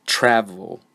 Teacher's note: that I very stress I try to hit the beginning syllable this word has two syllables and the first syllable is the one that is stressed